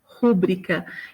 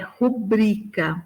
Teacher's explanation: Não há acento gráfico ali. Então, a sílaba tônica é esse bri, né?